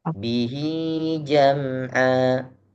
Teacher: Hi-nya panjang, Hi- 2 harokat.